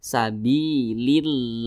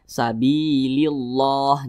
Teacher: apabila huruf yang posisinya itu tepat berada di belakang kalimat Allah apabila dia memiliki tanda baca kasrah maka kalimat Allah dibaca tipis dibaca tarkik